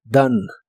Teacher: La o se pronuncia como una a y la e del final no se pronuncia.